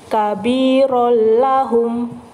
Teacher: tanwinnya tidak dibaca tapi siap-siap masuk ke huruf lam tanpa mendengung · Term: Idgham bilagunnah